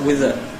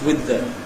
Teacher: these two dental fricatives get their full value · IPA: wɪð ðə